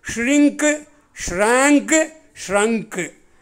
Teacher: எஸ்ஹெச் வர்றதுனால அதனுடைய உச்சரிப்பு நம்ம நாக்கை மடித்து உள்ளே மடித்து சொல்லணும்